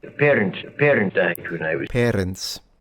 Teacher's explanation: A definite trilled R. Once again, a characteristic of old school accents.